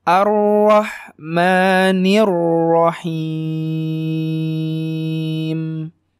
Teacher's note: Ro-nya tebal, ha-nya sangat tipis, mimnya 2 harakat.